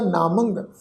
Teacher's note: इस तो अगे जी गोबिंद नामंग, नन्हे नूं कन्ना मम्मे उत्ते टिप्पी की मात्रा नासिक उच्चारण होएगा